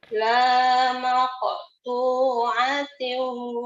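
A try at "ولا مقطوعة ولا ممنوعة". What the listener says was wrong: hanya pendek. Hanya pendek. Hati-hati. Hanya pendek.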